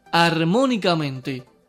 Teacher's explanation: La sílaba tónica es mo y lleva tilde porque está antes de la antepenúltima.